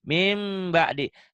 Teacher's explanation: Jadi ada bunyi M-nya disertai dengan Dengung. dan Tahan. ditahan, ada bindengnya ya. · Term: Iklab